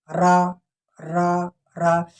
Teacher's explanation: تو اب ہم چلتے ہیں را کو اب جب پڑھتے ہیں را را را، جیسے ہم را کو پڑھتے ہیں تو ہم یہ محسوس یہ ہو رہا ہے کہ ہماری جو زبان ہے وہ پیچھے کی طرف مڑ رہی ہے